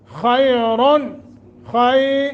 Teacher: یا ساکن ما قبل فتح ہے، حروف لین نرمی کے ساتھ